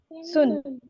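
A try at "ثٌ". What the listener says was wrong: सुन, सा पे जुबान बाहर निकालो, सुन।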